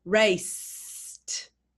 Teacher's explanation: If we say the word raced and you pronounce the s in raced, can you feel the vibration stops? There's no vibration, it's unvoiced.